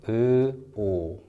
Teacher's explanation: From the vowel uh put your lips forward a little bit to form a circle. And you have the sound oo like this.